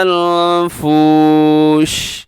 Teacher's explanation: آخر میں شین ہے تو شین کے اندر صفت کون سی ہوتی ہے، تفشی، یعنی آواز پھیل جاتی ہے